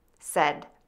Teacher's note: Move to the short f vowel that is somewhat open. End with d by touching the tip of your tongue to the back of your top front teeth. Be sure your voice box is on and moving. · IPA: /sɛd/